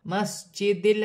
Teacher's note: जीम साकिन है, तो हुर्फ़ क़लक़ला में से है, क़लक़ला के साथ अदा किया जाएगा।